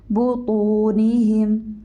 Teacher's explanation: طا کو موٹا کیجیے، آپ نے پڑھا ہے حروف مستعلیہ میں سے ہے